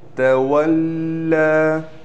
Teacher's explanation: لام پر تشدید بھی ہے، اس پر ٹھہراؤ بھی کریں گے اور کڑا زبر ہونے کی وجہ سے لام کو کھینچا بھی جائے گا۔